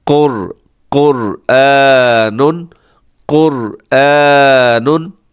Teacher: را کے اوپر جزم ہے، لیکن را سے پہلے والے حرف کے اوپر حرکت ہے، تو اسی را کو بھی ہم موٹا پڑھیں گے